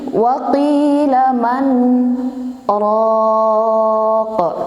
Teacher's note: Jadi yang benar itu seperti ini, waqila man raq. Nah, jadi lafadz nunnya itu masih kedengaran gitu, setengah, namanya kan tawassut, sifatnya tawassut.